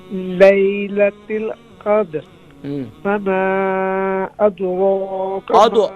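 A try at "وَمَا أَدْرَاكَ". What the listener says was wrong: अदो नहीं है यहाँ, द्वाद नहीं है यहाँ, दाल है। वमा अदराका, दाल लाइट है, अद अद अद अद हो जाएगा तो द्वाद बन जाएगा।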